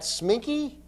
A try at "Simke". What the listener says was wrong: No, you said Sminky. it's Simke. It's very clearly spelled S-I-M-K-E. Simke.